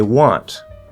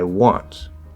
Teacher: A want is stressed. So it gets a little more force, it's stronger, right? So it can stand up against gravity more and it stands out.